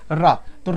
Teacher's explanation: आपकी जबान जो है दांत के पहले जो मसूड़े हैं वहां से उसका उच्चारण स्थान हो रहा है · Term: वत्स्य व्यंजन